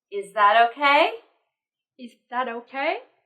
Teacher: with the yes no question we should use a rising tone